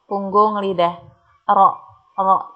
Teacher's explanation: ro cenderung ke punggung lidah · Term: inhiraf